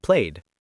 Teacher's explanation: after voice sounds like B, G, V, it's da, like played.